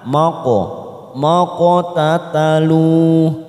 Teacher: Ada huruf qaf sukun di sini biasanya warnanya biru tua namanya bacaan qalqalah sugro karena mati di tengah kalimat kita pantulkan